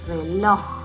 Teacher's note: está en una palabra aguda porque su sílaba tónica la última